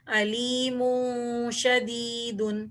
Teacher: علیم شدید، یہاں پر دو پیش کی تنوین کے بعد شین آ رہا ہے اس لیے یہاں پر ہم اخفا کریں گے. اور میں اس لیے کھینچ کے پڑھ رہی ہوں کیونکہ یا ساکن سے پہلے زیر ہے تو وہ بھی یا مدہ بن گئی